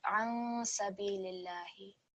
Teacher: because it is followed by the letter sin, there's going to be a light nasal sound